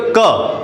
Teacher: क के ठीक आगे हमें आ की ध्वनि आती है